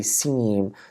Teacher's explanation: some air is going out of the nose when I say seem so I kind of lower the velum as the like along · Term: nasalization